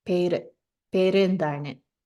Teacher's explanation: Notice the pere has the chandrakala that we talked about. So it's not pera, it's pere. It's not a u, it's like a schwa.